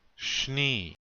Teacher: there is no A or E sound between that S and N